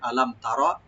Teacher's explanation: আলাম তার, ইয়ানি তা একটু পাতলা হবে, রা একটু মোটা হবে